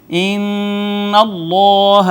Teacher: اس میں جلالت کا ما قبل مفتوح، لہٰذا اس کو مفخم پڑھیں گے · نون تنوین ہے، ما بعد حرف اخفا ہے، لہٰذا یہاں پہ اخفا کریں گے · نون مشدد پہ غنہ کریں گے